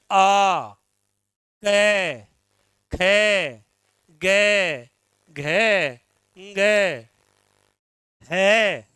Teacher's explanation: इन वर्णों को बोलेंगे तो आपका मुख है वो खुला रहेगा। जो फेफड़ों से निकलने वाली वायु है वो आपके कंठ के ऊपर दबाव डालेगी।